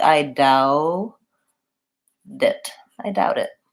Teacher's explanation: So what happens when I have one word that ends with T and the next word starts with a vowel, like doubt it, is that I link those two words and then the T ends up being what's called a flap T. It sounds more like a D. So it sounds like I doubt it. · I linked those two words and then the T ends up being of what's called a flap T it sounds more like a D